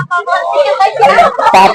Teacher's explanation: तुम होठ साट के पा बोल देगा।